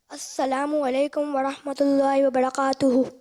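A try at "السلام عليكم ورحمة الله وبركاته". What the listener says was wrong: वालेकुम अस्सलाम व रहमतुल्लाहि व बरकातुहू। व बरकातुहू नहीं, व बरकातुहू, डंडी वाला काफ।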